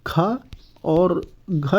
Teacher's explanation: लेकिन ख और घ जो है ये आपका महाप्राण है